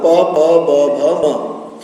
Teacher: पु अर्थात पूरा प वर्ग प प ब भ म तथा पद्मानीय प और फ, इन सभी का उच्चारण स्थान ओष्ठ होता है। यहाँ ओष्ठौ प्रयोग है, द्विवचन का प्रयोग है, अर्थात अधरोष्ठ, ऊपर और नीचे दोनों वाले ओठ।